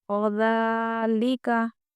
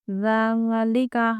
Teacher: باریک آواز کے ساتھ، یعنی کہ دونوں دانتوں کے درمیان میں زبان رکھتے ہوئے پڑھیں گے